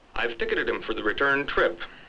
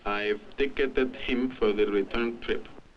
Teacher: The stressed syllables tick, turn, and trip are lengthened. The unstressed syllables are crowded together and reduced. This lengthening of stressed syllables and crowding together of unstressed syllables is characteristic of English.